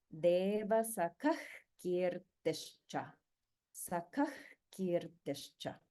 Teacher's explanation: it's like a h sound but with a throat just a little bit more constricted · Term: visarga